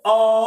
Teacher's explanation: अ तो तालू से भी दूर है और निम्न भाग से भी बीच में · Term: विवत